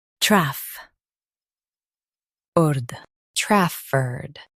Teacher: Emphasize traff and keep erd soft.